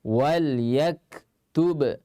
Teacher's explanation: ba makhrajnya kedua bibir dirapatkan. Sifatnya kalau dia sukun qalqalah. Ba yang kedua sama-sama kedua bibir juga tempat keluarnya.